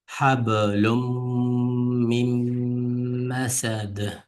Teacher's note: Aslida lun deb o'qilgan, ammo mimning sababidan hablum deb lum deb mim o'qib ketdi. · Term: idg'om